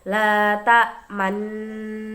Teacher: La ta'manna termasuk bacaan ismam. Ismam yaitu menampakkan dumah yang terbuang dengan isyarat bibir.